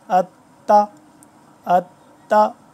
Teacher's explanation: اب یہ آ گیا نا تشدید، یہاں پہ بیچ میں ہمیں تھوڑا سا رکنا پڑ رہا ہے اور تھوڑا سختی سے